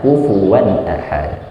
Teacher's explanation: kufuwan wawunya fathatain jumpa dengan hamzah jadinya idhar. Jadi enggak ditahan